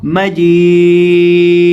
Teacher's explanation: आखिर से हम दाल को साकिन कर देंगे और इसी तरह दाल को हिलाकर पढ़ेंगे, कलकला करके पढ़ेंगे, क्योंकि ये हरूफ कलकला में से है।